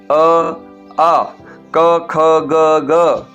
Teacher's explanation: ये सारे कंठ से बोले जाते हैं